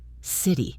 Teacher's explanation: our voice falls at the end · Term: falling intonation